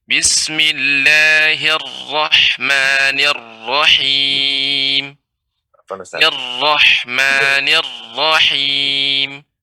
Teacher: ro-nya dia lebih lebih tebal dan tasydidnya lebih ditampakkan